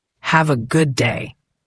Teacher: the D at the end of good is often very light, almost swallowed, especially before another consonant like day.